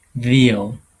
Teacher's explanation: It's a labiodental because you are using your upper teeth and your lower lips to do this sound. And then it's a fricative because you have a little space for the airstream to go out · that's the V sound in veal. Okay, it's a voiced sound. It's a labiodental because you are using your upper teeth and your lower lips to do this sound.